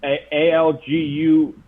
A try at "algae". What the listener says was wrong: Yeah, one of the letters is silent there, buddy. It's algae.